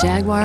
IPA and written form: ˈdʒæɡwɑːr (Jaguar)